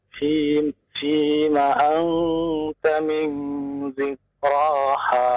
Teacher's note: Maka menjadi ikhfa, samar bunyinya ya antara nun dengan ta